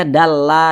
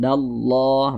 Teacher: Nah dallah kita tebalkan jangan dibaca dalla jangan tapi ditebalkan dallah begitu